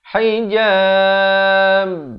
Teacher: Bila saya lepaskan bibir itu, baru dia bunyi ba itu. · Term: pantulan